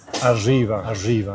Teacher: The trill [r] gets pronounced a little bit like [ʒ] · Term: erre asibilada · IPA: aʐiba